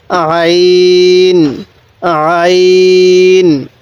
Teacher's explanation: আইনটা উচ্চারণের সময় আমরা গলার মধ্যে আমরা যেখানে গড়গড়া করি সেখানের মধ্যে একটু চাপ দিয়ে পড়লে আইনটা সহি উচ্চারণ হবে